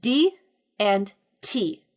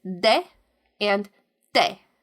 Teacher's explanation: in English the tip of your tongue hits the ridge of your gums making for a sharper sound